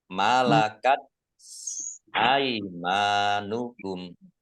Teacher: ta sukun ini dibacanya t agak keluar s-nya sedikit malakat aimanukum mim fathah Alif Mad thii kumnya waqaf dibaca pendek · tak sukun ini dibacanya T agak keluar S-nya sedikit